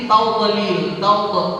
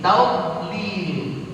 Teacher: Huruf dad ini qalqalahin jadi tawdalil, tawd itu salah. Karena huruf dad enggak punya sifat qalqalah. Ya, jadi harus ditahan. Tawdlil. Mesti gitu.